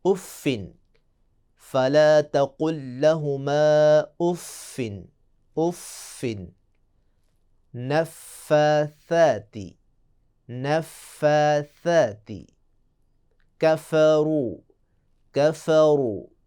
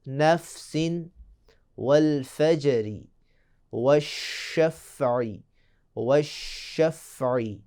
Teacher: انشاءاللہ ہم آئندہ بحث میں بتائیں گے کہ فا میں ایک صفت پیدا ہوتی ہے، صفت نفخ، جس کا مطلب ہے کہ جب فا کو ادا کریں گے تو آواز منہ سے پھونک کر نکلے گی۔